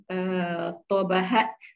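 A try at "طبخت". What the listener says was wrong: tobakhot. Pakai kho ya. Itu pakai kho, Bu. Tobakhot. Tobakhot.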